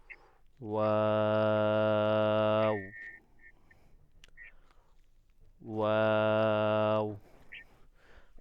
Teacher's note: ওয়াটা উচ্চারণ কিভাবে হবে, আপনার দুই ঠোঁট কি হবে, গোল হবে। গোল করবেন, গোল করে উচ্চারণ করবেন, ওয়াও, ওয়াও।